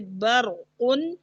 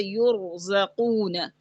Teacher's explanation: را ساکن ما قبل زبر ہو جیسے برقن، اور را ساکن ما قبل پیش ہو جیسے یرزقون. یہ را بھی موٹی پڑی جائے گی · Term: را موٹی